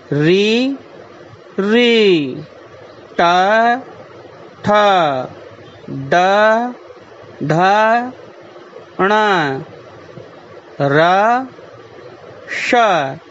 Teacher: एतेषाम् अक्षराणाम् उच्चारणं मूर्धया भवति। अस्मात् एते वर्णा मूर्धन्यवर्णाः भवन्ति कथ्यन्ते च।